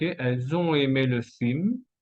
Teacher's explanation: Liaison entre elles ont et después, elles ont aimé, enchaînement vocalique.